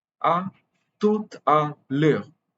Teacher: E and U together are pronounced as E, and the R is usually a glottal R in standard French. Glottal R means you use the glottis, which is in your throat, to pronounce it. · in tout, the T last consonant is pronounced because the next word, or rather the next letter, is a vowel, E. So the last consonant is silent, but it is pronounced if the next word begins with a vowel, or if there is a vowel just after that consonant.